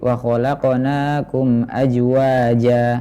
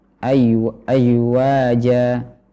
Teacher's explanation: Tengah lidah naik ke langit-langit atas maka ini menyebabkan suaranya mirip dengan huruf Jim